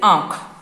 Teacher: जब हम इसको बोलते हैं तो हवा जो है हमारे नाक से और मुख से दोनों से निकलती है। जैसे आंख, तो यानी कि हमारा मुंह भी पूरा खुल गया है और नाक तो हमारा खुला हुआ है ही। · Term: अनुनासिक